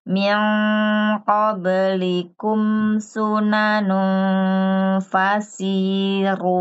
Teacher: Mimnya ditahan sebentar saja, nggak perlu lama-lama, satu ketukan.